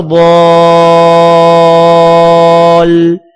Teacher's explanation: ضاد الف لام مد زبر، ضاد الف لام مد زبر ضال۔ الف کو مد کی وجہ سے لمبا کر کے آخر میں شد کی وجہ سے لام کے ساتھ ملانا ہے